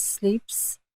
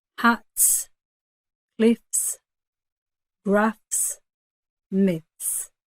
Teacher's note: So we've got the word sleeps. So after a P, when you have an S, it's almost voiceless